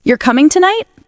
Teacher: The tone rises at the end.